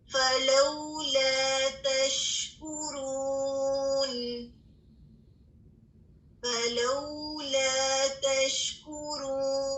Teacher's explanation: اب اس پہ شین میں تفشی کو محسوس کیجیے گا